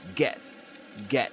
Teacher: So in that case rather than glottal reinforcement you [music] get glottal replacement which means that the glottal stop replaces the t sound